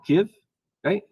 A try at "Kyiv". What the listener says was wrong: The old way of saying it was Kiev, and now the new modern Ukrainian way is Kyiv.